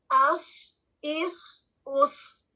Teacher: اس میں ہوا جاری رہے گی، آواز جاری رہے گی، اور بھاری ادا کیا جاتا ہے، اور اس میں بھی سیٹی کی آواز پائی جاتی ہے